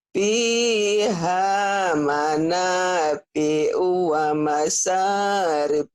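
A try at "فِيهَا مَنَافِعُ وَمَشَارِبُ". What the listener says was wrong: Iya, nanti shin-nya dilatih ya. Wa masya. Shin. wa masyarib.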